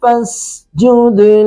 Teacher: وَمِنَ اللَّيْلِ فَاسْجُدْ سین پر سٹی کی آواز، جد دال ساکن آ گیا تو یہاں پہ قلقلہ کریں گے، یعنی دال کی آواز د یہ لوٹ کے آ رہی ہے۔